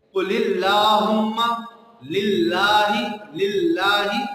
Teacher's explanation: اب اس لفظ اللہ کی لام کو باریک پڑھا جائے گا